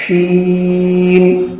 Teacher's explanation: آواز بالکل پست ہو اور شین آواز نرم ہو، شین میں سختی نہ ہو. بعض لوگ شین ادا کرتے ہیں، شین شین غلط ہو جائے گا، یہ تفشی نہیں ہوگی.